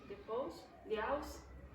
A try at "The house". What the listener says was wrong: You're you're not pausing. Okay. Pausing means stop for a short time here and then stop for a short time here.